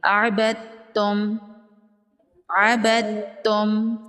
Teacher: دال کو سائلنٹ کریں گے، دال کو تا میں ملا دیں گے۔ عبدتم، یہاں پر بھی ادغام ہوگا، دال کو تا میں ملا دیں گے۔